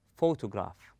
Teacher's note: the word photograph is stressed in the beginning · place in the first part on fo we stress on fo we place a strength or force on the first syllable and we go easy on the on the rest of the word